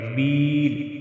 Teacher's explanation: بی یا مدہ ایک الف کے برابر کھینچ کر پڑھیں گے